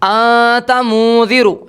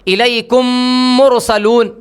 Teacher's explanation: آپ دونوں ہونٹوں کو کھول کر پڑھ رہے ہیں، جبکہ غنے کے اندر بالکل دونوں ہونٹوں کو دبا کر الیکم مرسلون ملا کر پڑھتے ہیں